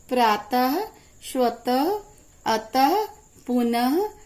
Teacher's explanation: इसे बोलने में हा की ध्वनि निकलती है। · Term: विसर्ग